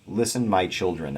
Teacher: two three syllable feet at the beginning these are recognizable as dactyls stressed unstressed unstressed stressed unstressed unstressed but then the last part of the line does not follow